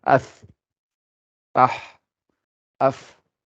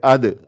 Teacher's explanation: Donc, toutes ces lettres-là, quand on les prononce, c'est la qualité qu'elles ont, qui veut dire l'air qui continue à sortir quand on finit au moment de la prononcer, on a de l'air qui sort. Et vous pouvez prendre toutes les autres lettres qui ne sont pas dans ce groupe-là, et vous verrez que vous n'aurez pas ça.